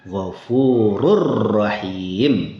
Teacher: tanwin unnya hilang masuk ke huruf ro. Jadi rnya ditasdid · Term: idgham sempurna